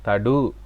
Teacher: முற்றியல் உகரம், இந்த உகரம் உச்சரிக்கிறப்ப எங்களுக்கு வாய் சுருங்கணும்